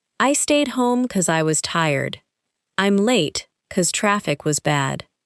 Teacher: You may also hear because pronounced very quickly without the first syllable standing out. · Another common reduction is because becoming cause in casual speech.